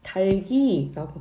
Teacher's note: 이거는 달기라고 발음하기 때문에 리을과 기억 중 어느 것도 탈락하지 않았습니다. 음운 변동 현상 자체가 일어나지 않은 거예요.